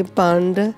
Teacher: So when you say bhand, the D at the end of the word is actually the tongue is on the roof of the upper palate of the mouth.